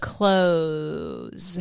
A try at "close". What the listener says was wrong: Oh, not clothes. C-L-O-S-E,